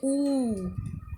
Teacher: होठों की स्थिति गोलाकार होती है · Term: वृत्तमुखी